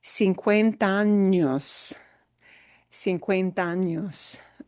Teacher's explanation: That 50 años won't be separated. It's all going to link and smush together.